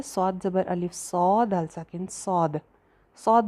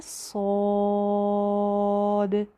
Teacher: इसको मोटा करके और भरा हुआ मुंह करके सौद। और लास्ट पे जो दाल की आवाज़ आ रही है वो बाउंसी साउंड होनी चाहिए, सौद द, इस तरह द करके, ठीक है।